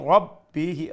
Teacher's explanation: ra full mouth ba has a shadda double sound